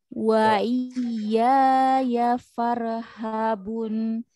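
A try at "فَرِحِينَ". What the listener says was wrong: Habunnya panjang, matarid li sukun 2, 4, 6. Baca yang empat.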